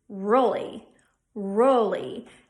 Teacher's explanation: what's going to happen is the tongue on the L is going to pull back towards the backspace of the mouth sort of like swallowing your